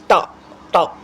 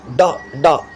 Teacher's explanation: Tip of the tongue acts as the active articulator and it is curled back. Tip of the tongue is curled back. Teeth ridge or the hard palate is the passive articulator in these sounds. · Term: retroflex